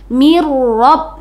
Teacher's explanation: Bil gunna hurufnya ada la dan ro ini di sini Ro Jadi bacaannya langsung ke huruf ro yang bertasydid mirab gitu ya tidak didengungkan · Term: ID Gom Bil gunna, idgham bila gunnah